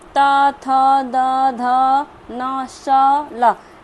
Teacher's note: जिनका उच्चारण ऊपर के दांतों पर जीभ लगाने से होता है